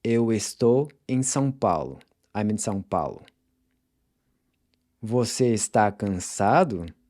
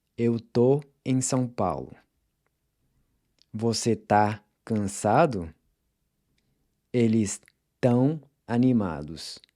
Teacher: people will usually just drop the es and say tô, tá, and tão